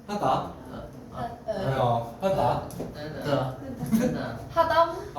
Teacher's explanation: 아래야 혀가 오그라들고 깊게 나는 소리입니다. 예, 얘는 아와 의의 그 중간에 있거든요.